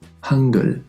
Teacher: Fíjate que en medio suena mucho más suave, casi realmente como una G de gato.